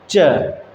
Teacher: देखिए जो जीभ है हमारी वो पीछे जाएगी, पीछे तालु के पास च, तो वहाँ से टकरा कर तब आएगी च। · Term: तालव्य व्यंजन